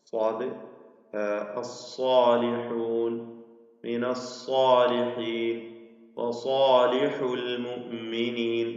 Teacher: സ്വാദ് തഫ്ഖീമോടുകൂടി പെരുപ്പിച്ച് തടിപ്പിച്ച് ഉച്ചരിക്കേണ്ട അക്ഷരമാണ് സ്വാദ്.